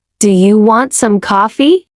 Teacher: That rising sound at the end invites a yes or no answer.